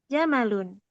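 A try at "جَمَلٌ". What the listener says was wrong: Jamal. Pendek ya. Jamalun.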